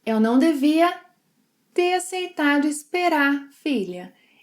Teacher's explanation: when it's in a sentence, we sometimes even drop the final R sound